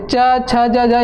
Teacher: तरवा को ही तालू कहते हैं तो तरवा से च बोलते हैं